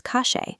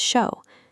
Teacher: The dialect transforms standard double L and Y sounds into a sharp, hissing sh sound. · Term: scheismo